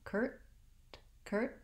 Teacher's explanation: Just stop the air and don't release the T.